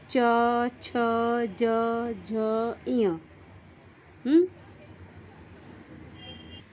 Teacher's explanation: तालू से टच होता है।